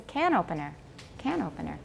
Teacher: Because it's a noun and another noun. 后面的那个名词是没有重音, so don't say can opener.